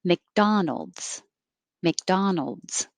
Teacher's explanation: I don't have to say k. I can just hold my tongue in the K position.